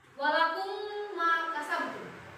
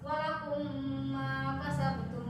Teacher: Dimasukkan huruf mimnya, itu ditekan gunanya 3 harokat. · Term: idgham